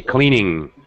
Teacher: there's no really hard G sound in the ing, gerund form. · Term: NG sound